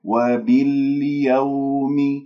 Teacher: والواو من كلمة باليوم لين ساكنة قبلها مفتوح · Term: واو اللين